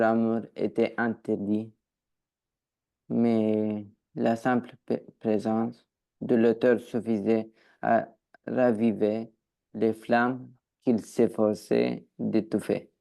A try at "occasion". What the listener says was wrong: Tu as fait une petite faute de prononciation sur ce mot-là. Tout à l'heure, tu m'as dit occasion. Attention, ici, il n'y a bien qu'un seul S.